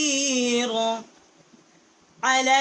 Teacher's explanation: العین جو ہے حروف حلقی ہے، واسع حلق سے اس کا مخرج ہے